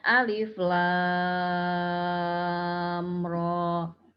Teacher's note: Jadi tidak ada gunnah antara mim dan ro, dan juga tidak ada imbuhan hamzah di huruf ro-nya.